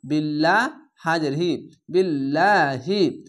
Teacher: আল্লাহ লেখাটি পাতলা করা হবে